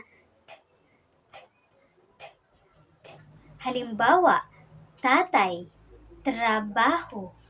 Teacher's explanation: Ang T ay napabilang sa pangipin at pasara. Ito ay walang tinig na bibigkasin natin na T, T, T, T.